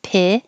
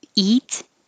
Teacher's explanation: so the vowel is i as in hit your tongue needs to be a little lower pit and not e like peeve